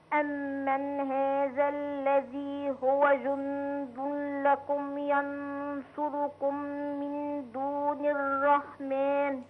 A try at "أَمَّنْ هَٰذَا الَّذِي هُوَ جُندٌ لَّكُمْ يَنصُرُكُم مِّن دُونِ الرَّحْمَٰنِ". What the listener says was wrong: لا الغنن متاكله بالراحه كده ونقسمها كده.